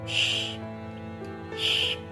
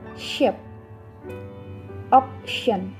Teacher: In a post-alveolar consonant, the constriction is made immediately behind the alveolar ridge. The construction can be made with either the tip or the blade of the tongue.